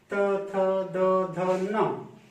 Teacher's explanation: फिर आप देखेंगे त वर्ग, त वर्ग के जितने भी अक्षर हैं, त, थ, द, ध, न, ये पांचों उच्चारित होने के लिए आपकी जीभ कहां जा रही है? दांत के पास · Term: दंत वर्ग